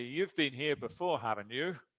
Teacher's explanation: With falling intonation, that is not really a question. I know you've been here before.